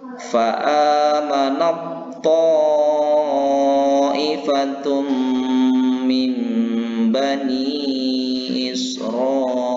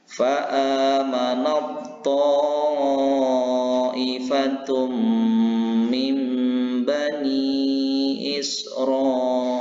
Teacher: Jadi tidak ada kedengaran lagi huruf tanya, tetapi dia masuk kepada huruf ta. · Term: idgham mutajanisaini